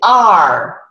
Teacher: So R in English is retroflexive and approximate.